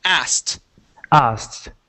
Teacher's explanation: So ask with an ed. Now, the trick with this word is that we do not pronounce the K when we have an ed at the end.